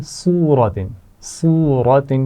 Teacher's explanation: صاد کو موٹا پڑھیں گے لیکن اس کی صفت کو واضح کریں گے, اس میں تھوڑی سی سی ٹی کی آواز آنی چاہیے